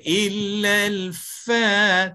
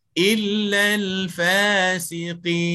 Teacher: Illal fa. Bila kita tekan maknanya berlaku nafas ditahan. Berlaku nafas ditahan ini sifat bagi huruf-huruf jahar. Sedangkan huruf fa ini huruf hamas. Tak boleh illal fa, tak boleh.